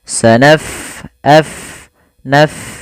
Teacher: Pada lafal bacaan sanafrughu, fa-nya kita alirkan nafasnya